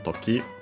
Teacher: Is a noun that is accented the last syllable on its own